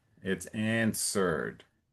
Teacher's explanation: it's like the W is silent so you don't have to say answer It's answered.